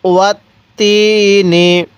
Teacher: তায়ের মধ্যে আমরা এক আলিফ টান দিব, কারণ জেরের পরে ইয়া সাকিন এক আলিফ টানতে হয়।